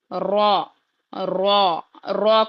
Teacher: र को मोटा पढ़ेंगे जब भी हम मुफरादत में पढ़ेंगे